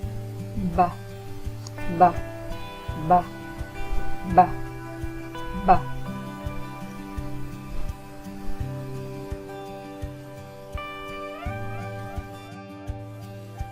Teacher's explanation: Put your paper in front of your mouth again and make the B sound. You should feel only a little puff of air.